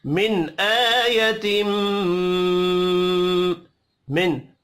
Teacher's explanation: نون ساکن کے بعد حمزہ ہے یہاں پر اظہار حلقی ہوگا غنہ نہیں ہوگا حمزہ کے اوپر کھڑی زبر ہے ایک الف کے برابر کھینچ